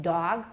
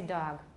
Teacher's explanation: We usually don't voice b-d-g when they're the first sound of an utterance.